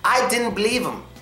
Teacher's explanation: sometimes we take out the first letter in him or them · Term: informal contraction